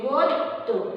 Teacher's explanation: আরেকটা দেখো, এটা হচ্ছে যে অন্ত ধ্বনি গদ্য, এই যে শব্দের শেষে কি আছে জফলা আছে, শব্দের শেষে জফলা থাকায় সেই যে জফলা যুক্ত যে ব্যঞ্জনটা আছে সেই ব্যঞ্জনটাও কি হচ্ছে দ্বিত্ব উচ্চারিত হচ্ছে